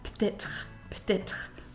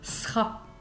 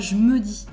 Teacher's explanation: when we are speaking in French, there is a sound that we usually skip, and that is the sound E.